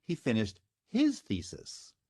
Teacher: so now the accent has been moved off of thesis and onto his for what's called emphatic stress or focus intonation